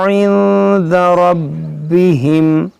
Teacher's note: नून साकिन के बाद दाल है, यहाँ पर इख्फा होगा